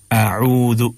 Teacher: अऊज़ु अब जाल को जा नहीं बनना है, आऊजो या आऊजू नहीं पढ़ना है। आऊज़ु ज़बान के बिल्कुल किनारे से अदा करना है, बहुत प्यार के साथ हल्के अंदाज में।